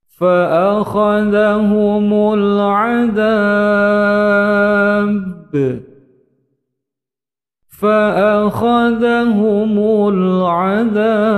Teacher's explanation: Huruf ba yang disukunkan ketika waqaf menjadi qalqalah kubra, pantulannya besar.